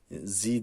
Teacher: demeye çalışıyoruz le leelee ceğiz önce bağlıyoruz lel sonra le L Peltek Z dilimizi ucunu hafif ısırarak